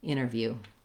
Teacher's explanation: So in interview, the stress is on that first syllable in, so we want that to be long. And then we have the unstressed syllable in interview.